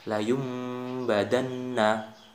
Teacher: Nah, dalam bacaan ini, bacaan nun mati atau tanwin tidak lagi dibaca. Jadi sebagai nun atau tanwin itu berubah bunyi, yakni menjadi huruf mim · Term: iklab